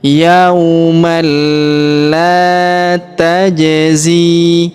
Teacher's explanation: Jadi bukan dibaca yauman tapi langsung masuk ke huruf lam ya yang berharakat tasydid dibaca yaumal yaumal la. Kemudian kita panjangkan dua harakat karena alif di depan huruf la